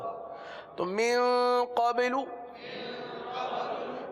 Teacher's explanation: اچھا قبلو کی آواز آ رہی ہے، قبا نہیں ہے، یہ قلقلہ کیا جا رہا ہے نا،